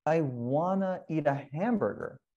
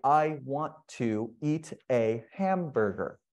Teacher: we'll want to becomes wanna and you see it goes up in wanna